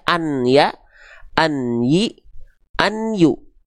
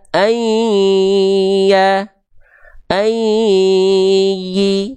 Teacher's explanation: kalau misalnya ada fathah tain an berjumpa dengan huruf ya, maka dia nggak dibaca an ya, an yi, an yu, tapi dia dibaca ayya, ayyi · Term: idgham